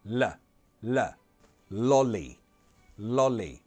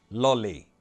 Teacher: the tip of the tongue is going to hit that alveolar ridge just behind your top teeth. This L, the light L, is for L's at the beginning of words or when there is a vowel sound just after the L.